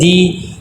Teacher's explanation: مجہول نہیں پڑھنا، معروف پڑھنا ہے، اور اس کو ایک الف کے برابر لمبا کریں گے کیونکہ یہ یائی مدہ ہے۔